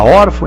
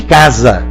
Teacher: Não saia dizendo que elas não têm acento porque terminam em A. O A é o A de casa, e não o de órfão e de imã. Aí não é A, é AN.